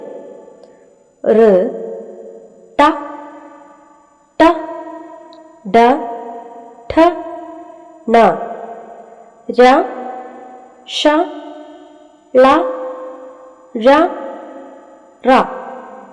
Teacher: വായയുടെ ഉള്ളിൽ മുകൾഭാഗത്ത് മൂർദാവ് എന്നാണ് പറയുക ഇവിടെ നാവ് സ്പർശിച്ചിട്ട് ഉച്ചരിക്കുന്ന ശബ്ദങ്ങളെ മൂർധന്യങ്ങൾ എന്നാണ് പറയുന്നത്